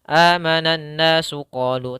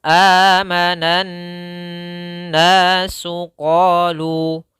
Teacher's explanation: maka caranya adalah kita tahan dulu suara n-nya 2 harokat